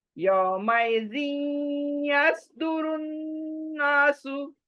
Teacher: इदगाम। दो जेर के बाद या शद्दा, तो जी या में मिल जाएगा विद गुन्ना। यौमइज़िन, देखे जी नून आ रहा है नाक में।